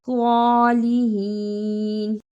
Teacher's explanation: وَالْيَوْمِ الْآخِرِ، صالحین، اسے صالحین نہیں پڑھنا، صاد کی جگہ پہ سین کی آواز نہیں آنی چاہیے